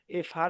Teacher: উপরের দাঁত দিয়ে নিচের ঠোটের পেট মানে ঠোটের মাঝখানে একটু কামড় দিয়ে হালকা একটু কামড় দিয়ে এফ একটু বাতাস বের করে ফার উচ্চারণ